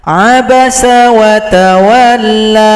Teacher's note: Tapi kalau kita tidak gabung, kalau berhenti di sini, tanda bendera tidak laku, la cukup dipanjangkan dua ketukan.